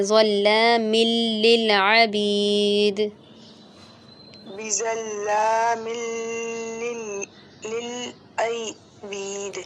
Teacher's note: میم کو لام سے ملائیں گے